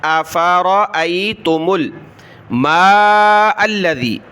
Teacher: میم کو آگے لام کے ساتھ ملایا